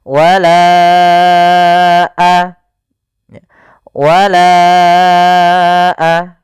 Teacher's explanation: Panjangkan lanya dulu empat harakat baru lepas. · Panjangkan la-nya dulu 4 harokat baru lepas. Wala wala. Kemudian pada lafalna di sini ada tanda sifar mustadir, yaitu lingkaran kecil di atas huruf alif. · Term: mad jaiz munfasil